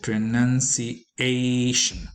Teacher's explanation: pronunciation is accented on the fourth syllable